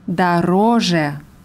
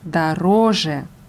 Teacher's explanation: Die Betonung ist auf dem zweiten O, auf der zweiten Silbe. Das Suffix je ist unbetont.